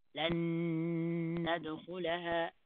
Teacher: You hold the noon and then you release another noon.